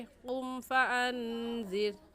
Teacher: कुम फ़अन्ज़िर में नून साकिन पर हम गुन्ना करेंगे, क्योंकि नून साकिन के बाद हुरूफ़ हल्की जो कि 6 है, हमज़ा हा आइन हा गैन खा, में से कोई लफ्ज़ भी नहीं आया।